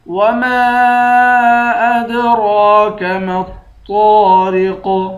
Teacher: میم کو طا سے ملا کر طا کو موٹا پڑھیں گے۔ طا کے بعد الف ہے، الف حروف مدہ ہے، اس کو 1 الف کی مقدار کھینچ کر پڑھیں گے۔